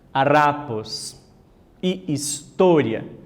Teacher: la más fuerte es la penúltima sílaba